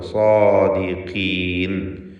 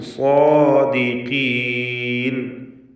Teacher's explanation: സ്വാദിഖീൻ സ്വാദിനും അലിഫിനും തഫ്ഖീം കൊടുക്കുക. സ്വാ എന്ന് തടിപ്പിച്ച് പറയുക. ഖാഫിന് കുറഞ്ഞ തഫ്ഖീമാണ് കസ്റ അതുകൊണ്ട് സ്വാദിഖീൻ.